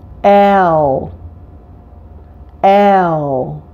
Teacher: this is actually a dark L with a short e attached to it · a variation of the L sound that's produced far into the back of your mouth dark elves follow vowel sounds in this case the dark L